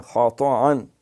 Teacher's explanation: خطأ، خا پہ راٹا ہے، طا پہ پچاکا ہے، خطأ، پھر اس کو عین نہیں پڑھنا، حمزہ پڑھنا ہے